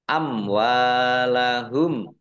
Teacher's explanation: Amwalahum mim sukun bertemu dengan huruf wawu, bacaan idhar safawi, dibaca jelas